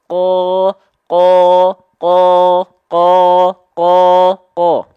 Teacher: yang lunak saja nih yang pink ini langit-langit yang lunak ya persentuhan antara pangkal lidah yang teksturnya lunak dengan langit-langit yang lunak menghasilkan tidak ada pergesekan yang membuat ada percikan nafas di sana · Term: huruf q